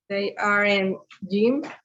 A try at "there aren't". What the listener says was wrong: Remember the pronunciation. We say there. There. Okay, there aren't. One of the common mistakes is that we say they aren't. Because if we say they, I mean, this is another word.